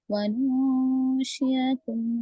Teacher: نون ساکن کے بعد شین ہے اخفا